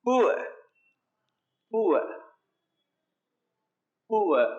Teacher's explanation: So the R sound should not be produced.